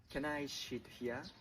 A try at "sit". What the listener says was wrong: Sure, but you should pronounce it like sit, not shit.